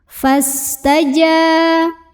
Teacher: Cara membacanya, jim yang barisnya fathah ini kita panjangkan 2 harokat saja. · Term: mad tabi'i